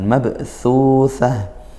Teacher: ada ba sukun berarti dibaca qalqalah sughra dipantulkan